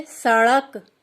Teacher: ड़ के उच्चारण में जीभ पहले ऊपर मूर्धा को स्पर्श करती है, फिर झटके के साथ नीचे आ जाती है। इस 2 गुण है, पहले ऊपर छूना, फिर झटके के साथ नीचे आना। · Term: द्विगुण व्यंजन